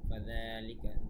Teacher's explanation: ফাযালিকা এখানে জাল পাতলা উচ্চারণ খেয়াল রাখবেন। ফাযালিকা জালের উপরে এক আলিফ টান।